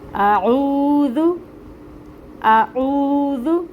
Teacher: حمزہ جو ہے یہ محقق ادا ہوتا ہے، آ یہ ساؤنڈ آئے گی اس کی، اور عین اور واو کو جب ہم ملائیں گے تو آئے گی او۔ عین کو اس کے مخرج سے نکالنا ہے، وسط حلق سے۔